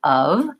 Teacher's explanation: of this one is terrible we spell it Oh F but we don't say an O sound or an F sound in this word we actually use a u sound ah and a V sound so it should sound like of so the first error pattern